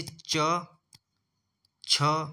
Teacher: इन च वर्ग का पहला और दूसरा वर्ण है च और छ, तो ये अघोष हो जाएगा